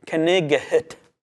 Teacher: in the Middle Ages, they pronounced both the K and the GH in the word night, as in knighet.